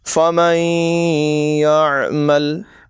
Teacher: یعنی نون کو یا میں ملا کر غنہ کر کے پڑھیں گے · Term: ادغام